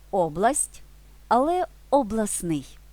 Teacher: це процес випадіння звука в групі приголосних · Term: спрощення в групах приголосних